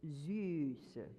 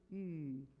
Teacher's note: U. It's an E tongue with a really tight U. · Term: umlauted U